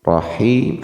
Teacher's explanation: haknya kembali tipiskan, hi-nya kasrah bertemu ya mati 2 harakat. Ketika di surah Al-Fatihah maka basmalah ini menjadi bagian dari ayat surat Al-Fatihah, maka dibaca mad tabi'i di akhir ayat selayaknya dibaca mad arid li sukun, bisa 4 harakat sampai 6 harakat.